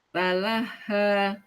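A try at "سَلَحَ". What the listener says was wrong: Kurang ngalir, terlalu cepat. Nanti jadi tawasud.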